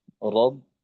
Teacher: রয়ে জবর আসছে, র মোটা হবে